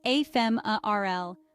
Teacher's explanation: The pronunciation is ephemeral, with the stress on the second syllable.